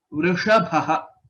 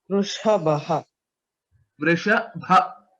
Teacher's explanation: Vrisha is murdhanya shakara. Vrishabha, bha mahaprana.